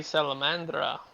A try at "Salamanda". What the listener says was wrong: Sa- Salamanda. There is no R.